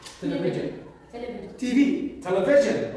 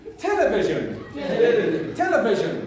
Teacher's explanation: television is a word having four syllables stress on the first one